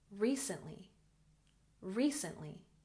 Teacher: recently emphasis on the first syllable